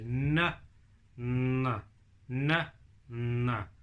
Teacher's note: N is our tongue at the top. It's kind of on that little ridge behind your top teeth.